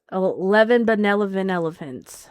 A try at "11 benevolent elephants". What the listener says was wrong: No, you didn't. You said banan.